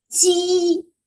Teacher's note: So first tone is above your head. It's do, very high.